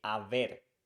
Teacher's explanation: we say Aver because we don't pronounce h in Spanish